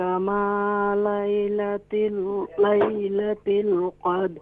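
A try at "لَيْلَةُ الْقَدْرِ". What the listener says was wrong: لیلۃ ال تا کے نیچے زیر نہیں کسرہ نہیں ہے ضمہ ہے پیش ہے.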